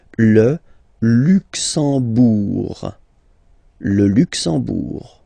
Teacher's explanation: You don't pronounce the M at all, it's this nasal en